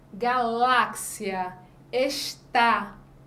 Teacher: o acento agudo a gente indica a pronúncia aberta da vogal